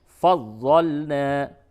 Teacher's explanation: نون الف زبر نا، یہ الف مدہ ہے، تو تھوڑا سا اسے کھینچیں